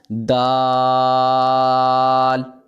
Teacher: زبان کی نوک اور اوپر کے دانتوں کی جڑ سے ادا ہوتے ہیں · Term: حروف نطقیہ